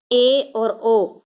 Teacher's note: अर्ध संवृत स्वर जिन स्वरों के उच्चारण में मुख द्वार आधा बंद रहता है